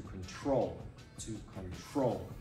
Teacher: notice how control stressed at the end